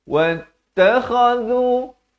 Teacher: Wattakhadhu kha di hujung kerongkong, zu di hujung lidah. Wattakhadhu samarkan mi bukan min.